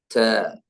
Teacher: നാവിന്റെ അറ്റം മേലെ മുൻപല്ലിന്റെ മുരടിൽ, base of the upper teeth, അവിടെ വെച്ചിട്ടാണ് ച